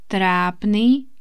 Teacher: We don't say it with long vowel at the end. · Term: short vowel